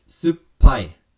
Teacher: and so what happens when you pronounce that it's supai so you almost have to pause and punctuate that double p sound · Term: double consonant